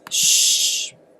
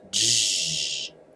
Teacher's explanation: raising the front part of the tongue to the palate we would have a voiceless Shh and the voiced would be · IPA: /ʃ/ vs /ʒ/